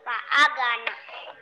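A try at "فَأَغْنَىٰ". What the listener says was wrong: Bukan Pak Aga, tapi Pak Agna. Pak Agna. Bukan Aga, Ag, Ag. Ditekan saya, Pak Agna. Kalau go tadi itu bukan kolkola.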